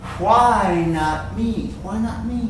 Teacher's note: this T sound it's very soft you almost don't hear